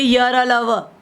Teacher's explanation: आप बोल के देखिए य र ल व, आपका कोई स्पर्श नहीं करेगी मुंह के किसी। इनका उच्चारण जीभ, तालु, दांत और होठों के परस्पर सटाने से होता है, किंतु पूरा स्पर्श नहीं होता। थोड़ा सा स्पर्श होगा क्योंकि ध्वनि निकलती है ना मुंह से, तो थोड़ा सा स्पर्श होगा किंतु पूरी तरह स्पर्श नहीं होता, इसलिए इनको अंतस्थ व्यंजन कहा जाता है।